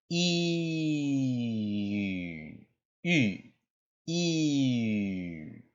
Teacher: It's actually the letter E, but with rounded lips. You can do this by saying E and then slowly bringing your lips together, which would look something like this.